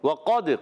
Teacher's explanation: واو کا مخرج ہے, واو ادا ہوتا ہے دونوں ہونٹوں کی گولائی سے. واو پر زبر ہے, حرکت ہے, کھینچنا نہیں ہے.